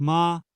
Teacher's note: the first tone which is the high-level tone